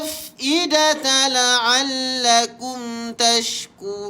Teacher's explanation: Mim mati bertemu dengan ta, kita jumpa lagi izhar syafawi. Maka kita baca dengan jelas.